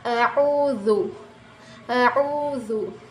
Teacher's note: یہاں پر دیکھ سکتے ہیں آپ، یہ والا زال دیکھیں، یہ جو ہے دونوں زبانوں سے، یہ زبان کی جو یہ نوک ہے دونوں دانتوں سے تھوڑا سا باہر آئی ہوئی ہے، تو تب نکلے گا زال